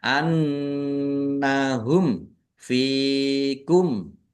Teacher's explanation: nun tasdid dibaca gunnah atau mendengung, ditahan biar tampak mendengung. Mim sukun bertemu dengan huruf fa, bacaan idhar safawi, dibaca jelas.